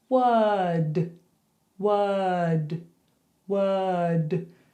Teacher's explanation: No R, just were and then d.